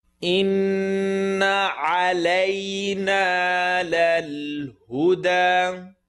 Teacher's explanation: Noon shadda, full nasal sound.